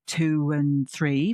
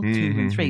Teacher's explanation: But like in the Matrix, there is no spoon. But we can add the w in if I'm saying 2 and 3